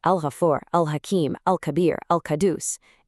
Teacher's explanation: When it's a lunar lam, you say the L. That's it. You see it in the text, you pronounce it out loud.